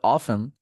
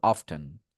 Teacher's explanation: ব্রিটিশরা বলবে অফেন আর আমেরিকানরা বলবে অফটেন